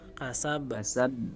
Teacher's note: كسب القلقلة تقرب إلى الفتح مطلقا. Dan beliau menjelaskan qalqalah itu mendekati ke fathah, tidak kasroh gitu.